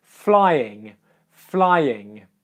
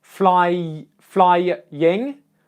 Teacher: do you hear me say the Y sound twice